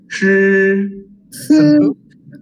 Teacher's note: Semua naikkan lidah, lau shi tak nampak. So anda naikkan lidah, lepas tu sentuh lelangit depan. So ini pronounce sebagai shi. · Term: ZH